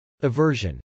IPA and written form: əvˈɝʒən (aversion)